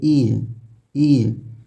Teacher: उसी तरह आप जब स्टार्ट इसको ई को करेंगे ई, तो आपका फर्स्ट वाला जो अग्र भाग है वहाँ पर जोर पड़ेगा।